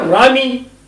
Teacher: تو یہاں پر بھی پھر رامی، اس لیے کہ لام داخل ہوئی حرف شمسی پر کہ جو را تھی، لام کو را میں تبدیل کیا اور را کا را میں ادغام کر دیا. پھر رامی پڑھیں گے.